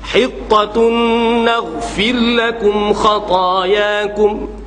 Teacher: Kena ada ra tu walaupun nipih, takrir dia.